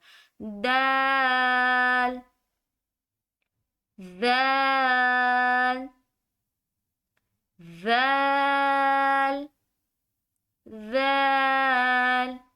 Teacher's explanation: دال کو پڑھنے کے لیے اپنی زبان کو اوپر والے تالو کے ساتھ یعنی کہ زبان کی نوک کو اوپر لگا کر ادا کیا جائے گا